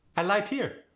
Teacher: the r was softened into an L